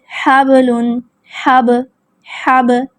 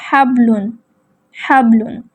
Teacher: آواز کو لوٹایا جائے گا، پلٹایا جائے گا، آواز میں حرکت پیدا کی جائے گی، جنبش پیدا کی جائے گی، جس کو قلقلہ کا نام دیا جاتا ہے